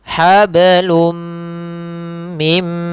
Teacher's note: Kemudian hablum, kemudian ketemu dengan mim, tanwin ketemu dengan mim. Apabila ada tanwin bertemu dengan huruf ya, waw, mim, nun, maka suara nunnya kita masukkan kepada mim. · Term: idgham bi gunnah